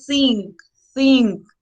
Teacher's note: the first one is voiceless don't produce vibration